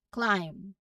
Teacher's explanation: B is there in the spelling, but when we say it, we end on the M sound. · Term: silent letter B